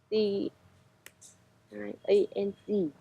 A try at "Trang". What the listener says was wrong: Not A. Let me pronounce it for you. Trang. TR. You missed the R. R. Trang.